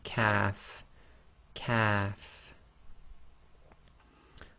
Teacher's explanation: kaf is again touching the soft palate, but it's slightly more forward than the qaf, and it's just said normally quite softly as kaf, kaf.